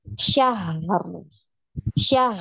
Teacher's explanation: Kalau syahr berarti sifat ha ini jadi ada kolkolahnya, ya. Sedangkan dia tidak punya sifat kolkolah. Dia punya sifat rokhawah, ya. Dialirkan suaranya.